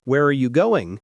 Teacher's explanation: if you ask an information question like, Where are you going? your voice falls at the end.